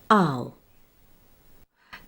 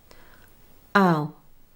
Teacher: In fast speech, the ow diphthong is often a quicker transition between the two vowel sounds. Despite the faster pace, the sound still starts with the mouth open and the tongue low, and smoothly moves to the sound with rounded lips and a raised tongue.